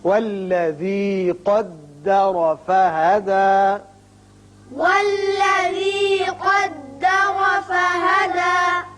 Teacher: قدر قاف پر پڑھیں گے، را بھی پر ہوگا اس لیے کہ اوپر زبر ہے